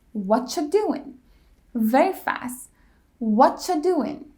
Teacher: To say it that fast, we have to simplify some. The word are gets cut out completely, and the T ending in what combines with ya and it creates the ch sound.